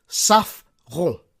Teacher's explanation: You need to roll the R in the back of your throat.